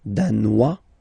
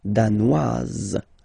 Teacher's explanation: Danois, don't pronounce the final S. Danoise, here you pronounce it.